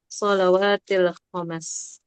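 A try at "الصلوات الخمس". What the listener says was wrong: Khams ya disukunkan aja ya.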